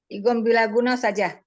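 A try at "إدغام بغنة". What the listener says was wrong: Bukan bila. Bi gunnah. Idgham bi gunnah, diidghamkan disertai dengan dengung.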